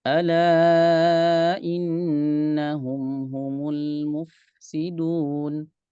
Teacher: Ngalir dulu fa-nya baru sin. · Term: sifat rokhawah